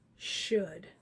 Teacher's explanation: we really do not hear the l